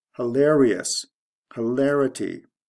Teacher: The stress goes from the second to the third syllable, I-O-U-S to I-T-Y, or if you want to consider the I-T-Y as part of the ending, it would just be O-U-S to T-Y.